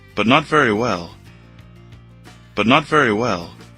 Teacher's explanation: Perceba que o but não tem o som do t